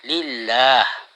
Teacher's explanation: artinya lam dibaca tipis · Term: lamul muraqqaqah